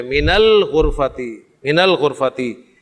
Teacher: من کے نون ساکن کو آگے ملاتے ہوئے آپ زبر دیتے ہیں. من الغرفتی، من الغرفتی.